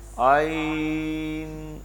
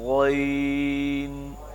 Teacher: عین اور غین بہنیں ہیں آپس میں لیکن ایک باریک ہے دوسری موٹی ہے